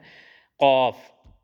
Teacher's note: یہ زبان کی جڑ اور تالو کے نرم حصے سے ادا کیا جاتا ہے، قاف